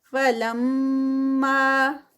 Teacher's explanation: لم پہ غنہ اور ما 2 کاؤنٹس